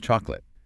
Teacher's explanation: The middle vowel just vanishes. It's gone. Or what about a common phrase like, "Did you eat?" If you learn the word slowly, you hear 4 distinct syllables. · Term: elision